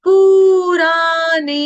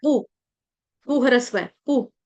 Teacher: पू को दीर्घ कर देते हैं, पू को दीर्घ नहीं करना है, पू आपका छोटा है , पू, पू ह्रस्व है, पू। ठीक है, दोबारा सुनेंगे एक